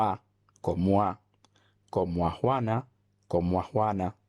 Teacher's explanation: un fenómeno común en el español dominicano y es la contracción de grupos vocálicos en diptongos